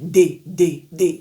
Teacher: la lettre D en français, D va se prononcer sur le palais. Vous voyez D D D, la langue est sur le palais. Mais en anglais, la lettre D est plutôt à l'arrière des dents supérieures.